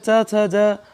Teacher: इनका उच्चारण स्थान तालु है